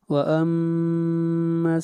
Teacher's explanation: میم کے اوپر غنہ، میم مشدد ہے.